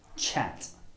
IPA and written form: ʧæt (chat)